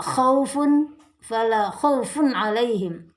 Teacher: Khaufun alaihim ini adalah izhar halqi, jadi bacaan tidak boleh dengung, tetapi bacanya jelas.